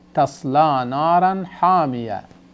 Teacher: So when we stop, this تا مربوط turns to ha.